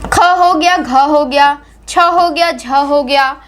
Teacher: बोलते समय आपके मुख से अधिक वायु निकलती है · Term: महाप्राण व्यंजन